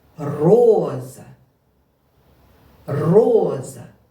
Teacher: наголос падає на перший голосний о скільки складів в цьому слові звичайно два бо два голосних і